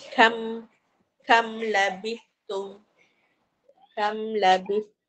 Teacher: Mim tu nyatalah tak dengung kan? Dia jelaskan mim dia. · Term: Izhar syafawi